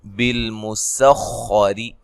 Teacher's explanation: خا کو موٹا، سین کو باریک، را کو بھی باریک پڑھنا ہے